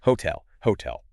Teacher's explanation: You have to squeeze the ho in right before the beat.